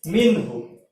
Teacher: دیکھو یہاں پر اب ہا، جب بھی نون ساکن کے بعد ہا آ جائے، ٹھیک ہے، جب ہا آ جائے تو وہاں پہ اظہار ہوگا، یعنی نون ظاہر ہوگا